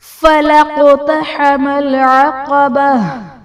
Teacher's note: فَلَقْتَحَمَ الْعَقَبَةَ، فَلَقْتَحَمَ میں قاف حرف قلقلہ ساکن ہے، یہاں پر قلقلہ خوب ظاہر کریں گے۔ عقبہ میں وقف کی صورت میں گول تا کو ہمیشہ ہا ساکن سے بدل دیتے ہیں